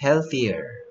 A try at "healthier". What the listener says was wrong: 그러면 th는 어떻게 해줘? 혀를 살짝 물고. 그래서 thier. healthier. healthier. 얘 소리가 빠졌네요. healthier. healthier.